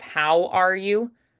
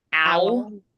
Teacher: H, you'll omit it, like just leave it off.